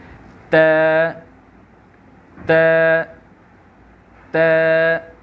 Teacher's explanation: زبان کی جو ٹپ ہے یہ ہمارے یہ سامنے کے جو 2 دانت ہیں اس کے گمز کو ٹچ کرتی ہیں، اس کے مسوڑوں کو ٹچ کرتی ہے. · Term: تا